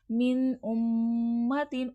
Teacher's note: ام میں میم مشدد ہے، غنہ ہوگا